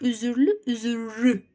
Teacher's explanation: Bax, üzür, z ilə r-nın ortasına bir dənə ü girdi. L da təbii ki, r ilə tələffüz olunacaq.